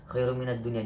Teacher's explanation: tidak boleh dibaca masuk dan berdengung, tetapi wajib dibaca jelas atau terang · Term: idhar